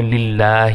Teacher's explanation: پیچھے ہمارے لام پہ زیر آ گئی اس لیے اللہ کو باریک پڑھیں گے, 1 سیکنڈ تک کھینچیں گے.